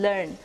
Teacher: The 21st consonant is the L sound, as in learn. It is described as a voiced alveolar lateral consonant.